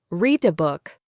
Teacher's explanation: The D sound connects to the A.